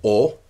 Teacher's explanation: the back mid vowel o